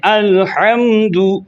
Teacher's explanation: اظہار میں صرف میم کو ظاہر کر کے پڑھنا ہے، آپ نے غنہ نہیں کرنا۔ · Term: اظہار شفوی